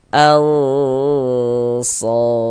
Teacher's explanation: Jadi ini bagian al-nya itu suaranya itu kita tahan, kita panjangkan sejenak ya, kira-kira sepanjang 2 harokat. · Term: ikhfa hakiki ausat